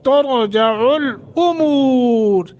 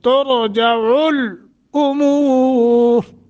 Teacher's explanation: हमजा और आइन का वाज़े फर्क हो